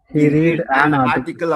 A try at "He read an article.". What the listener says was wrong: Read படிக்க கூடாது. ஹீக்கு அப்புறம் ரீட்ஸ்ன்னு தான் வரும். இல்ல ரெட்னு வரலாம். ஹீ ரீட்னு வரக்கூடாது. So he ரெட்.